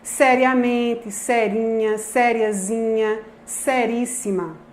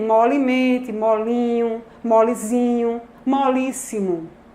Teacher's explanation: A palavra primitiva tem essa vogal média baixa, não é, em posição tônica, séria. Então, a tendência é que as palavras derivadas preservem esse médio baixo, essa vogal média baixa